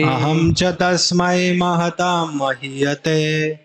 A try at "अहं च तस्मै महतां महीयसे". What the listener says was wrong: ते कहाँ से आ गए?